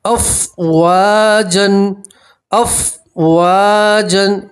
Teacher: واو کے ساتھ الف مدہ اس لیے آپ ایک الف کے برابر کھینچیں گے